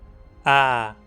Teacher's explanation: Aquele A um pouco mais para frente na boca do que o nosso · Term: vogal anterior aberta não arredondada